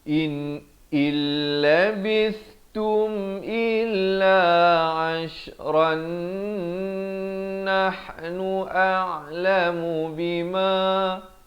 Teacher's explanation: Jadi ra tanwin ini terus masuk dalam nun yang bersabdu. Jadi idgham bi gunnah, kena dengung dua harakat.